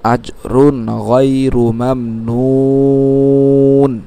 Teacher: মদ্দে আরজি হিসেবে 3 আলিফ টানলাম